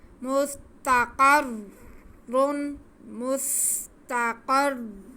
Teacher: را کو سختی سے پڑھیں گے اور پر بھی پڑھیں گے کیونکہ را پہ 2 پیش ہیں اور شد بھی ہے، تو دونوں چیزیں ہمیں ادا کرنی ہیں.